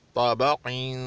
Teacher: ता मोटा, बा पतला और काफ मोटा होगा